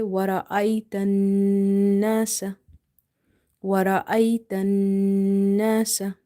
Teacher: this noon sound we will elongate up to one alif, the time we take to say alif one time, by taking this sound into the nose, by doing nasalization, ghunna.